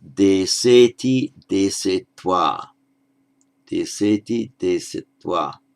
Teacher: You make the absolutive in etwa, deseti, desetwa, deseti, desetwa. Notice that the e before the twa is shortened somewhat because it's a consonant cluster. So it's not desetwa, but desetwa.